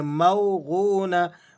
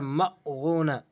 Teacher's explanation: موغونہ، بعض ساتھی یہاں جھٹکا لگا کر مغونہ اس طرح سے پڑھ دیتے ہیں۔ غوت کو آپ نے کھینچ کر پڑھنا ہے کیونکہ اس کے بعد واو مدہ ہے، تو اسے ایک حرف کے برابر آپ کھینچ کر ادا کریں گے۔